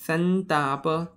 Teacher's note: परत उच्चारताना तुम्हाला समजतंय की अनुस्वाराच्या ऐवजी न येतोय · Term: अनुनासिक